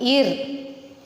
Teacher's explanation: நுனி நாக்கு பல்லுக்கு பின்பக்கம்